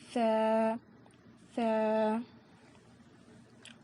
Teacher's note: اس میں سیٹی جیسی آواز نہیں آئے گی، س ایسی آواز نہیں آئے گی